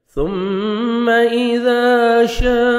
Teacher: حروف مدہ کے بعد اسی کلمہ میں حمزہ آ رہے ہیں، 3 سے 4 سیکنڈ ایکسٹرا مد کرنی. یہ مد واجب یا مد لازم بھی کہلاتی ہے.